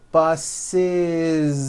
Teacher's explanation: The last sound you hear is that voiced Z.